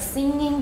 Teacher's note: singing the ng is voiced